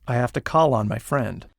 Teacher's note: one way to avoid the pronunciation difficulty of a final l as in call is to make a liaison when the next word begins with a vowel